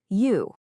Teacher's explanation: Make your lips into a tight circle like you're about to whistle. But then try to say the E sound.